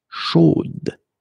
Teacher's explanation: here you pronounce the final d, whereas in the masculine form, you don't pronounce it